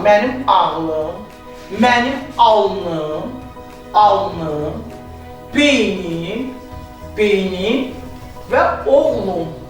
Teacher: Bu sözlərə saitlə başlanan mənsubiyyət şəkilçisi artırdıqda sözün ikinci ecasındakı sait düşür